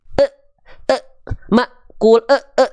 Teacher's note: Kenapa Maknya terhenti kenapa enggak makul karena dia ada Hamzah sukun Hamzah sukun punya sifat Hamzah ketika sukun itu terasa sifat syiddahnya tertahan suara · Hamzah ketika sukun itu terasa sifat syiddahnya tertahan suara ya tapi Hamzah sukun ini enggak boleh mulai muncul ketika huruf